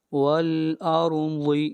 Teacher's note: اگلی آیت، والارض، را کو موٹا پڑھیں گے اور را سے پہلے زبر ہے اور ضاد کو بھی موٹا پڑھا جائے گا، ضاد حروف مستعلیہ میں سے ہے